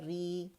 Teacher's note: را کسرہ میں تقریر کی کمی ہوتی ہے